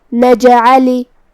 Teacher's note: کلمت نجعل میں یہاں جیم ہے اور اس پہ جزم ہے تو یہاں جیم کا حکم ہے قلقلہ. قلقلہ کا معنی ہے حرف ساکن کو ہلانا، لہذا ہمیں جیم کو ہلاتے ہوئے یہ کلمہ کو پڑھنا ہے